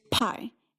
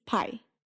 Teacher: the difference between English and Japanese is all about that puff of air. >> In English, there's pi and in Japanese, pi.